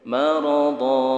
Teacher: Fathatain diwaqafkan, panjang seperti mad tabi'i. Marada. Mad iwad.